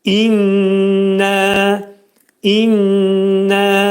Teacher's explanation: nun hərfi burında şiddətli şəkildə sıxılacaq. şiddətli və iki səs iki saniyə miqdarında iki saniyə miqdarında sıxılacaq və iki səs qaldırılacaq.